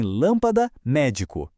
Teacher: Uma palavra proparoxítona é aquela que tem a sílaba mais forte na antepenúltima posição.